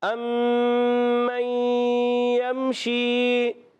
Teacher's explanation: اور میم مشدد میں غنہ کریں گے